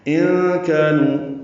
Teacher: نون ساکن کے بعد کاف آنے کی وجہ سے اخفا ہے، کاف باریک ہے، الف مدہ ہے، نو واو مدہ ہے.